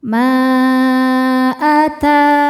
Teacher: Maka mimnya panjang boleh empat boleh lima harakat. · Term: mad jaiz munfasil